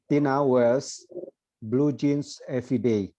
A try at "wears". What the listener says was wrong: Coba wears-nya diucapin sekali lagi. Tina wears. A-nya nggak kedengaran ya. Jadi A-nya tuh jadi benar-benar wears saja. Tina wears blue jeans every day.